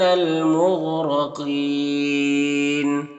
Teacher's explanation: یہاں پر الف لام حروف قمری میم کے شروع میں تو لام کو پڑھیں گے، الف کو نہیں پڑھیں گے۔ غین حروف مستعلیہ میں سے پر پڑھیں گے، را کو پر زبر ہے، را کو بھی پر پڑھیں گے۔ قاف حروف مستعلیہ میں سے قاف کو بھی پر پڑھیں گے۔